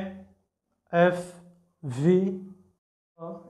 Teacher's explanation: এরপরে হচ্ছে fricative fricative যে কনসোনান্টগুলো আছে সেগুলোকে উচ্চারণ করতে গেলে দুইটা স্পিচ অর্গান এতটা কাছাকাছি চলে আসে যে এই যে আমাদের যে এয়ারটা বের হয়ে আসে ভিতর থেকে সেটা এই স্পিচ অর্গানের সাথে ঘর্ষণ হয় ঘর্ষণ সৃষ্টি করে